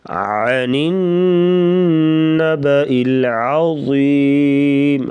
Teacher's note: عین کی آواز گلے سے نکالیں گے، حلق کے درمیان سے عین رگڑ کھاتی ہوئی آواز